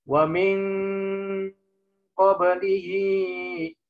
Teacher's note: Nah, min ko jauhnya sampai nun ke qaf berubah menjadi eng. Ng.